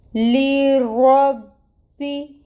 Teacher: با کے اوپر تشدید ہے، ٹائم ٹیکنگ ہوگا، اور پھر اس کے نیچے کسرہ ہے، 1 کاؤنٹ پڑھیں گے۔ لیربی، با کو موٹا نہیں ہونے دینا آپ نے، رو کو موٹا پڑھنا ہے، پر کرنا ہے، لیکن با کو موٹا نہیں کرنا